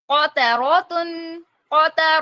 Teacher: कफ मोटा पढ़ा जाएगा ता बारीक